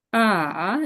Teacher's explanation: 3 নম্বর tone নিচে নেমে উপরে যাবে, falling আর rising tone, falling, falling plus rising.